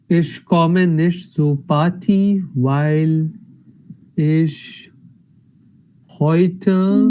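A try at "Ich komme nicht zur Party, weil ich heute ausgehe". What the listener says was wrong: Perfect. Very nice. Impressive.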